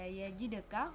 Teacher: Hukum tajwid qalqalah sugra karena huruf dal sukun berada di tengah kalimat. Cara bacanya dipantulkan ringan. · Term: qalqalah sugro